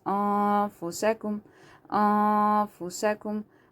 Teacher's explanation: noon is silent, and after that there is a ta from haruf ikhfa, so you have to hide the sound of this noon into the nose.